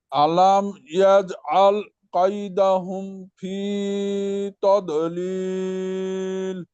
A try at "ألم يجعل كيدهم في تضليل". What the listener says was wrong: জি মাশাআল্লাহ, ঠিক আছে।